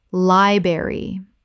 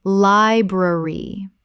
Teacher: Both the R sounds must be present. This is a three-syllable word.